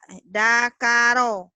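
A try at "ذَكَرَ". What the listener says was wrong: Terlalu keras itu. Terlalu keras. Zakaro.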